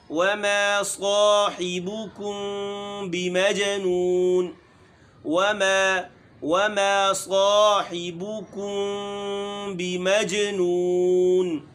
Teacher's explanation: بمجنون، جی میں قلقلہ ہے